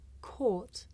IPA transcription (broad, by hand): kɔːt